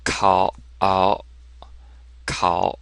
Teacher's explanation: So listen closely, my throat's a little more closed. It's not so open as it would be if you say ow. It's more closed.